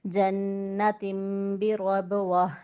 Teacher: جنت غنہ تم اقلاب اور بی رب با کے اوپر قلقلہ اور گول تا کو وقف کی صورت میں ہم ہا میں بدلیں گے